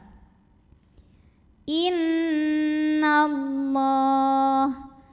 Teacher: Allah dibunyikan secara tafkhim karena baris huruf sebelumnya fathah maka dibacanya tebal